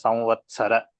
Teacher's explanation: When we say Vatsara, the Takara, we have to make it Mahaprana